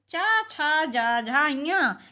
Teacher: इसी तरह च वर्ग में च छ ज झ ञ इसमें ञ का उच्चारण स्थान नासिका है ताल भी और नासिका भी है